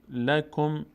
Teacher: کاف ساکنه بعدش میچسبه به میم